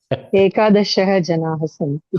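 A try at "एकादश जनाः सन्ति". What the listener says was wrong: Ekadasha. No visarga. Ekadasha janaha santi.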